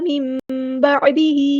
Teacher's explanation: نون ساکن کے بعد با یا تو یہاں پہ اقلاب ہو رہا ہے، میم کی آواز آئے گی میم با، عین کو مستحرک مڈل تھروٹ سے ادا کرنا ہے،